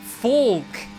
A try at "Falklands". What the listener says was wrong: Bro, you sound like you're saying fork.